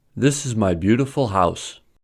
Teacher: The first sentence has two stressed syllables, bew and house, needing extra stress for house. So, the pitch rises to level 3 with bew and to level 4 with house.